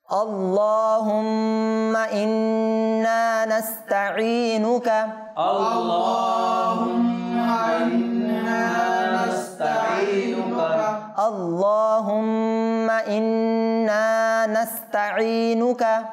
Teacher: এখানে দুইটা গুন্না মিমে মুশাদ্দাদ নুনে মুশাদ্দাদ এবং নুনটাকে টানতেও হবে